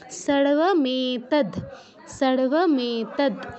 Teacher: তো আমরা খেয়াল রাখবো যে দয়ের পর অ যেন আমরা উচ্চারণ না করে ফেলি। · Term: হসন্ত